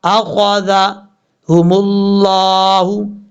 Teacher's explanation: یہ خا حروف مستعلیہ میں سے پر پڑھا جائے گا